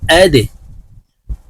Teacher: দাল কলকলার হরফ নিচের দিকে ধাবিত করে ধাক্কা দিয়ে উচ্চারণ করব